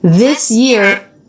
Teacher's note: this year which was sort of an sh sound